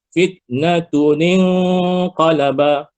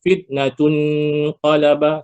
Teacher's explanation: Kenapa dia dengung? Sebab nun yang bertanda mati dengung bertemu dengan qaf, fa hakiki.